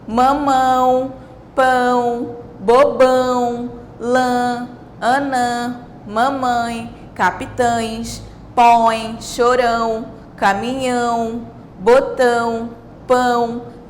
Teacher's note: todas essas palavras são faladas né, com um som que sai tanto pela boca quanto pelo nariz, tá bom? Isso é causado pelo sinal tio. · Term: som nasal